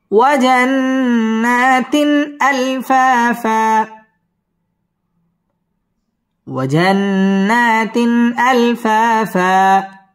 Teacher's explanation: পড়তে হবে ওয়াজান্নাতিন আলফা মধ্যে তবাই একালিফ টেনে পড়তে হবে আলফা ফা দুই জবরের বামে ওয়াকফ হইলে একালিফ টেনে পড়তে হয় এখানে আমরা একালিফ টান দিয়ে ওয়াকফ করব وجنات ألفافا وجنات ألفافا